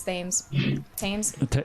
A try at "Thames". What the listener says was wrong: Tame. No, you don't say it. It's not. You don't pronounce the TH. It's T. It's a T.